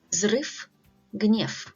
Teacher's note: V at the end of the word is pronounced as F sound